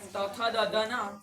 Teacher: વર્ગ બોલાય ઋતુ લસાના દંતાહ એ તુ વર્ગ એટલે તથ દધન એ આપણા દાંતમાં જીભ અડે ત્યારે તથ દધન એવું બોલે